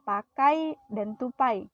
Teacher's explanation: Diftong naik adalah vokal yang diucapkan dengan posisi lidah vokal kedua lebih tinggi daripada yang pertama. Diftong ini juga disebut diftong menutup.